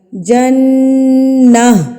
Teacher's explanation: جب ہم اس گولتا پر وقف کرتے ہیں تو یہ گولتا گول ہاں میں تبدیل ہو جاتی ہے · یہ گولتا گول ہاں میں تبدیل ہو جاتی ہے. تو جب ہم جنہ پڑھیں گے نا تو نا کے اینڈ پہ ہاں کی ساؤنڈ آئے گی